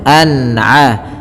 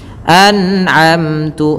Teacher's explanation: ketika ada nun mati kita lihat bertemu dengan huruf ain, maka dibaca dengan jelas suara nunnya, dan kita baca dengan bacaan namanya izhar halqi.